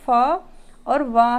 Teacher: दंत ओष्ठ यानी कि दांत से और ओष्ठ से, इन दोनों का प्रयोग करके जिन व्यंजनों को बोला जा रहा है, उच्चारित किया जा रहा है, वे फ और व हैं। इनके उच्चारण में हम दंत और ओष्ठ का प्रयोग करते हैं, इसलिए ऑप्शन आ बिल्कुल सही है।